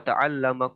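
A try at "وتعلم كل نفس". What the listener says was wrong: Ta'lamu, bukan ta'lama. Kalau ta'lama belajar.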